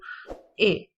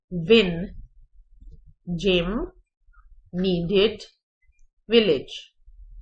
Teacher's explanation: Front of tongue up, थोड़ा सा the upper portion, the front portion of the tongue is in the higher position. ए, इस तरह से हम प्रोनाउंस करते हैं. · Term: short vowel sound